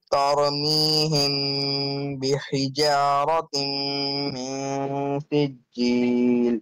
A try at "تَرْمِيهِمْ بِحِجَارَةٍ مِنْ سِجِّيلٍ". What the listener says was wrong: Don't apply kalkala on raw, not tar. It's tar, tar.